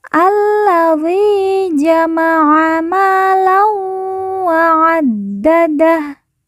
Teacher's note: Lan bertemu dengan huruf wawu, maka tanwin dileburkan, langsung masuk huruf wawu, kemudian ditekan, ditahan 2 harokat dan didengungkan.